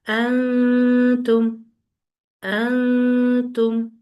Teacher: ہم زبان کی جو ٹپ ہے اسے نون کے مخرج یعنی تالو سے پورا نہیں لگاتے غنہ کرتے ہوئے، اس کو الگ رکھتے ہیں تالو سے، ٹھیک ہے؟ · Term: اخفا